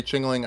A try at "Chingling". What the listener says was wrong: I think you're adding an extra syllable. It's just Chingling. It's not I thought but you're saying Chingaling. Chingling.